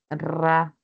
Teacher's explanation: es una vibrante múltiple la que tiene la rayita